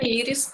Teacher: Íris o acento é no i, né? No primeiro i.